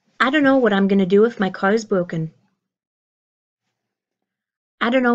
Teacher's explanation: we hear that don't know becoming this very common reduction of dunno